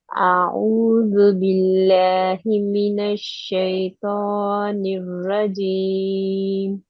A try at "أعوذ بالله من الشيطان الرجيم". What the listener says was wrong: Good, but the rajim need to be heavier.